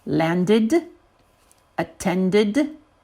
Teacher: when I added the ed, then my last syllable was ded, and I have to pronounce that. The ded needs to be pronounced.